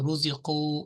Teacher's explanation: اس قاف کو واو کی وجہ سے جو حرف مد ہے اس کی وجہ سے اس کو آپ کو 2 سیکنڈ لمبا کرنا چاہیے تھا